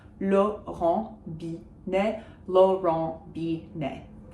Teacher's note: no T's are pronounced because they're not followed by an E.